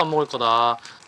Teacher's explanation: At the end here where he says 안 먹을 거다, it goes up quite high at the start, and then the end sounds like it stays flat. 거다. This is less common because typically the very end will go more down, and it'll look more like actually this.